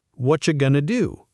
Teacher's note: This one combines 2 reductions. What are you compresses, and the T and Y blend into a ch sound.